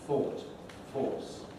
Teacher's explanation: you'll notice that this is a pretty well lip rounded vowel in my foundation you can see my lips all round thought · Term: all vowel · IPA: /ɔː/